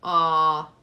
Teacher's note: there's no high tone no nasal tone it's just very plain naked